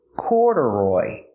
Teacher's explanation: the stress is on the first syllable corduroy and a secondary stress on the third syllable corduroy so the second syllable is not stressed it's pronounced relaxed